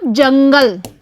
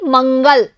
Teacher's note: जिस पर नाक से अधिक बोलने में आता है उसे बोलते हैं हम अनुस्वार